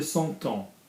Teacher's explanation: we don't pronounce the M, we don't pronounce the P and the S in temps